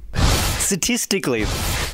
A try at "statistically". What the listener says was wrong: It's just missing a T, isn't it? No, it's statistically. They say statistically, but you say statistically. You're missing one.